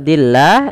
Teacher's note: lafal Allah yang didahulu dengan huruf kasrah maka dinamakan dengan lam tarqi lam yang dibaca dengan tipis